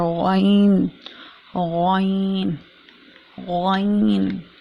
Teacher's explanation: غائن جو ہے وہ حلق کے اوپر والے حصے سے ادا ہوتا ہے